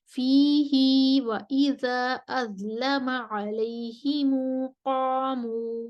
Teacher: मक्की का फी ही पर हाय ज़मीर पर सिला होता है, वो सिला के साथ पढ़ के कसर करेंगे और फिर आगे अलैहिमु पर भी सिला करेंगे।